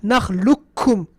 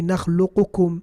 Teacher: that qaf has been completely jumped. We jumped to the kaf. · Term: idgham